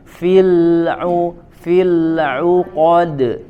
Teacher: lam sukun ditahan dulu di makhrajnya, tidak dipantulkan, tidak dilepas